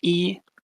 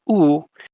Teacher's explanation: With E, your lips are flat, almost like you're smiling, E, and then with oo, your lips go round or rounded.